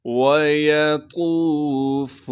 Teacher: بغیر کھینچے پڑھنا ہے، یا کو بھی بغیر کھینچے پڑھیں گے، طا کو موٹا کر کے پڑھیں گے اور طا کو آگے واو مدہ سے ملائیں گے، واو مدہ